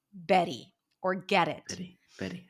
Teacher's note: the flap T is a t between two vowels and it sounds like a light D